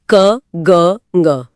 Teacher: इनके उच्चारण में बहुत कम हवा लगती है। दूसरी तरफ है महाप्राण जहां फेफड़ों से ज्यादा हवा धकेलनी पड़ती है। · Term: अल्पप्राण